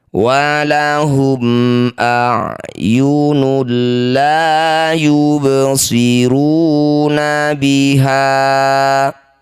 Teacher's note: Fathah diikuti alif, ha disebut bacaan mad tabi'i. Meski posisinya dihentikan, panjangnya tetap dua harokat saja atau dua ketukan.